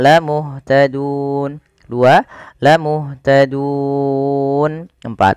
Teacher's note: Mad yang terjadi karena sebab sukun arid, yang sebelum huruf sukun itu ada huruf mad berupa waw, alif atau ya. Maka kita boleh memilih memanjangkan 2 harakat, 4 atau 6. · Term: mad arid lisukun